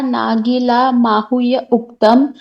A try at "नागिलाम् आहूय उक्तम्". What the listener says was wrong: माहू नहीं, नागिलाम आहूय।